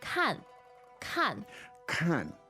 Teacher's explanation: notice the falling tone there, the fourth tone